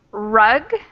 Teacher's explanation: how the R sound is made, where you curl your tongue up a little bit